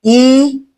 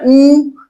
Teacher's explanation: एक बार और चेक करके देखो, ई, ऊ, ई, ऊ। तो जब हम ई कहते हैं तो जीभ आगे जाती है, जब ऊ कहते हैं तो जीभ सिकुड़ करके पीछे आती है। तो सीधी सी बात यार, घर पे बैठ करके चेक कर लेना ई ऊ करके, कि जिसमें जीभ सिकुड़ करके पीछे जा रही हो उसे पश्च स्वर कहा जाता है, जिसमें जीभ आगे जाती हो उसे अग्र स्वर कहा जाता है।